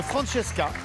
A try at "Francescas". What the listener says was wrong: On prononce le S chez nous.